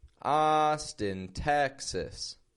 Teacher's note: notice again the contrast in the syllable stress. Austin, strong, weak.